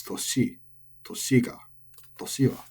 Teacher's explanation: Toshi is also odaka, final high, but there's a much higher chance you've been saying this wrong as toshi, but it's not.